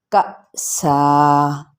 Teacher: اب یہاں پہ تنوین زبر ہے اور آگے الف ہے، ٹھیک ہے، تو جب ہم اسے وقف کریں گے تو اس کی ایک حرکت کو، تنوین زبر کی ایک حرکت کو پڑھ لیں گے اور ایک کے چھوڑ دیں گے، لیکن باقاعدہ طور پہ اس پر مد کریں گے، یعنی مد اصلی بال الف کے برابر کھینچیں۔